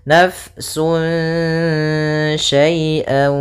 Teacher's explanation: Kemudian pada lafal fa, alirkan nafas karena dia sifatnya hamas, mengalir nafas · Di sini pada lafal sun syai'a ada tanwin bertemu dengan shin yaitu bacaan ikhfa. Maka cara membacanya disamarkan kepada huruf sya atau huruf shin. Kemudian syai ada bacaan lin lembut, syai bukan syai bukan pakai tapi dia syai'a dengan ya sempurna kasrah i, syai'a.